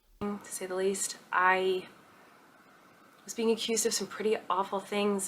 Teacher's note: this weird breathy soft tone